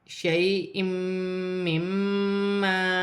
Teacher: یہاں یالین بن رہی ہے، یا ساکن سے پہلے زبر ہے تو یالین بنے گی، اسے کھینچا نہیں جائے گا۔ دو زیر کی تنوین کے بعد میم مشدد آ رہی ہے، تنوین میں غنہ بھی ہوگا، ملا کر بھی پڑھا جائے گا